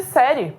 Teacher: Só que o E, ele é pronunciado mais forte. Logo, o I passa a posição de semivogal. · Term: ditongo